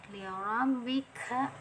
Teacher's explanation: untuk makhraj kaf ini ada anginnya juga nih, dia masuk huruf hamas, ada aliran angin